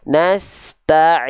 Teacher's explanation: Harusnya dari ain tengah tenggorokan. · Dilafalkan dari tengah tenggorokan.